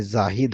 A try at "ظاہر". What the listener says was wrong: ارے زاہد بھائی بنا دیا آپ نے اس کو. ظاہر فاعل اگر اس میں ظاہر ہو. اچھا اس کا مطلب یہ ہو گیا، اس میں ظاہر کا مطلب ایسا ناؤن جو دکھائی دیتا ہے. ٹھیک ہے.